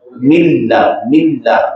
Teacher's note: اب ملہ کہنے میں نون موجود ہے اس میں لیکن شو نہیں ہوگا، ہاں ضم ہو گیا اس میں مکمل طور پر ادغام کامل